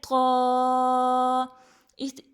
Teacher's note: زبان کی نوک اور ثنائے علیہ کی جڑ